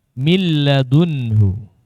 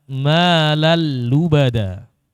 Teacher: Malan lubada dibaca malal lubada tanpa adanya gunnah. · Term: Idgham bila gunna